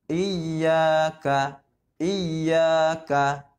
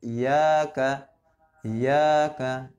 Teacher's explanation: Iya ya, tasdid kembar ya, idgham itu kembar, hurufnya seakan-akan 2.